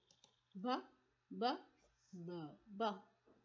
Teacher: There is a vibration. It means it's a voice sounds.